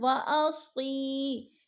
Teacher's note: واصی، یا ساکن سے پہلے صاد کے نیچے زیر ہے تو ادھر یا مدہ ہو رہا ہے. یا مدہ کو ہم نے ایک الف دو حرکات کے برابر کھینچ کر پڑھنا ہے